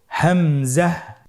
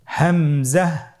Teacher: হামজা হরফটি উচ্চারণের স্থান হায়ের মতোই। হা হরফটি যেখান থেকে আমরা উচ্চারণ করেছি একই জায়গা থেকে আমরা হামজা হরফটি উচ্চারণ করব হলকের শুরু হতে।